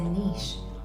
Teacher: I also liked the way he said niche, more like niece with a sh.